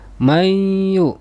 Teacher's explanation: Ini adalah idgham bi gunnah, sebab nun sukun bertemu dengan huruf waw.